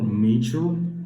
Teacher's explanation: the consonant which is voiced, palatal, alveolar, fricative.